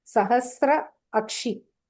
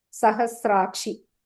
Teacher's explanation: Sahastra is a ends with a ashi starts with a. So both the short vowel a become one long vowel.